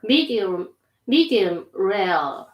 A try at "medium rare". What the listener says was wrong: Try not to stop talking between the words. Let them flow together. Medium rare. No pause. Medium rare. Medium rare.